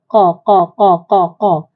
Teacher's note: pangkal lidah ditekan ke Pangkal langit yang dekat dengan anak tekak tu